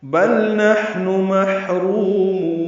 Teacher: بل میں لام ساکن ہے اور اس پہ اظہار ہوگا، یہ نون سے نہیں ملا سکتے